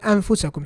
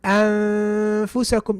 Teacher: My tongue doesn't go to the articulation point for the noon. Rather, I get ready to pronounce the fa. However, you can feel there's a noon there.